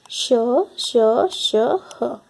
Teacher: Next, ऊष्म व्यंजन, श, श, श, ह। इन वर्णों के उच्चारण में हवा के रगड़ खाने से मुख में गर्मी उत्पन्न होती, अतः इसे ऊष्म व्यंजन कहा जाता है।